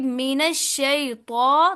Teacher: तो को करना है मोटा, क्योंकि हरूफे, ये हरूफे मुस्ताले में से